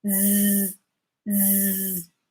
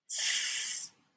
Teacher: So if you notice that s sound, there is no vibration at all. But if you put over here and just said z, you would feel the difference.